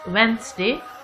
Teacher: The D sound is silent here and it's Wednesday.